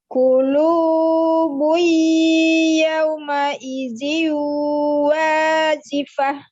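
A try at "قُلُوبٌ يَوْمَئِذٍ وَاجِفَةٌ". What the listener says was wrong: Nah, qafnya ditebalkan lagi, huruf isti'lanya huruf qaf. Qulubun yawma idzin wajifah.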